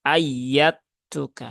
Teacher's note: Kemudian dal ketak ini ada idgham mutajanisain dan dia modelnya adalah kamil sehingga huruf dalnya diidghamkan ke huruf tak menjadi ayat tuka ya.